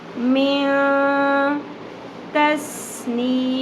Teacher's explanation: ت حروف اخفا میں سے آتا ہے، یعنی ہم نے نون کی آواز، نون ساکن کی آواز کو ہائڈ کرنا ہے، چھپانا ہے